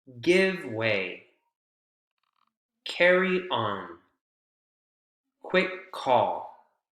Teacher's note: all of these phrases take more or less the same length of time even though carryon has three syllables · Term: strong syllables or beats